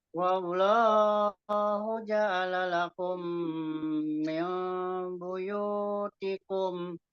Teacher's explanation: Kumnya itu ditahan, mim ketemu mim kalau mau lanjut.